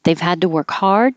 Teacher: So the oo and to changes to and the t changes to a d because it's between two voiced sounds